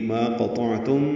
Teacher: تم میں میم ساکن کے بعد پھر میم آئی ہے، دونوں میں ادغام کر دیں گے، ملا دیں گے، دوسری میم مشدد ہو جائے گی. ما قطعتم ادغام شفوی ہے، غنہ ہے.